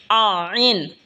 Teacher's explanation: আইন হলকের মধ্যখান হইতে উচ্চারণ হবে আইন। এই হা যেখান থেকে উচ্চারণ হয়েছে সেখান থেকেই আইনও উচ্চারণ হবে।